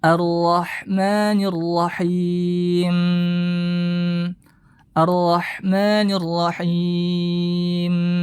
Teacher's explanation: dia memanjangkan guna pada huruf mimnya